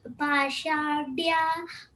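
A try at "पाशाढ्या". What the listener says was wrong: Pashadhya, not dya, dhya.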